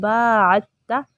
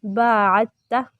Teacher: عین کو تا کے ساتھ ملانا ہے، دال یہاں پر پڑھنے میں نہیں آئے گا